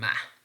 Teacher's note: the manner in which ma is produced, the air is coming out through our nose. So that nasality, or the concept of coming air through the nose, refers to the idea of nasal sounds. · when we are producing ma, we are pressing the two lips against each other. But this is not plosive or whatever, this is nasal. When we are producing ma, the manner in which ma is produced, the air is coming out through our nose.